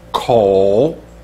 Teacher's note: falling and rising, third tone